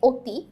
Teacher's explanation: অ এর মতো উচ্চারণ না হয়ে ও এর মতো উচ্চারিত হয় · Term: সংবৃত উচ্চারণ